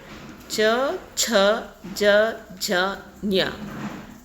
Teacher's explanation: ತಾಲವ್ಯದಿಂದ ಉಚ್ಚಾರ ಆಗ್ತಕ್ಕಂಥ ಅಕ್ಷರಗಳು ಯಾವ್ಯಾವು ಅಂದರೆ ಚ, ಛ, ಜ, ಝ, ಞ. ನಾಲಿಗೆಯ ಮಧ್ಯಭಾಗ ತಾಲುವನ್ನು ಸ್ಪರ್ಶಿಸುತ್ತದೆ, ಅದಕ್ಕೆ ನಾವು ತಾಲವ್ಯ ಅಂತ ಕರಿತೀವಿ